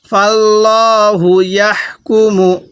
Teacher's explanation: তাহলে এখানে আল্লাহ শব্দের এই যে লামটি আছে এই লামের পূর্বে একটি জবর দেখতেছি, এই জন্য আমরা এই লামটিকে মোটা করে পড়ব। তাহলে ফাল্লাহু, ইয়া লাগবে এই হায়ের সাথে ইয়াহ, ফাল্লাহু ইয়াহ, কাপ পেশ কু, মিম পেশ মু, ইয়াহ কুমু।